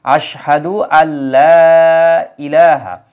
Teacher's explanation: আলিফ টানের একটা চিহ্ন এই জায়গায় দেওয়া থাকবে তাহলে কি দাঁড়াচ্ছে আশহাদু আল্লা সরাসরি আ থেকে লা এর সাথে সংযুক্ত হয়ে যাবে নুনের উচ্চারণ আর হবে না